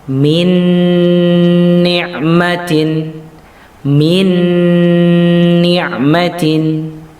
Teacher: suara Nun di idghomkan dileburkan kepada suara setelahnya kemudian ditahan suara tersebut sehingga suara tersebut menjadi suara yang wunlah ya baik-baik Hai setelahnya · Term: idgham bighunnah